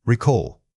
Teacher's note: When saying this word, make sure the first syllable is quick and followed by a sustained O sound. Practice it slowly at first, focusing on keeping the vowel consistent throughout the word.